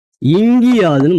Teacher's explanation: இந்த உகர ஓசை வந்து இகரமா மாறிடுது. அப்ப இங்க ஒரு குட்டியல் உகரம் இங்க ய வரிசை சொற்கள் சேரும்போது அது ஊனா வந்து ஈனவா மாறிடுது. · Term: குட்டியல் இகரம்